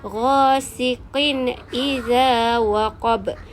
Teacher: Qin tu dibaca dengan jelas dan nyata tanpa dengung. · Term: izhar halki